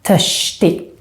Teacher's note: As you might notice, also here we skip the T in the end when we say the word törstig and hungrig. And then since I'm from Stockholm, I also make this RS combination sound more like a sh sound